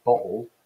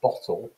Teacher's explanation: they are substituting a kind of a breathy h sound from the back of the mouth for what in rp would be a phony so are all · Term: glottal stop